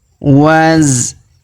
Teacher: Huruf da kita panjangkan 2 harokat karena alif di depannya